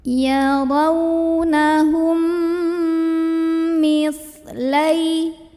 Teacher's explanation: Kemudian ada idgham mimi karena ada mim sukun yang bertemu dengan huruf mim, maka cara membacanya mim sukun yang pertama dileburkan dengan mim kedua sambil dengung, jadi tahan bunyi emnya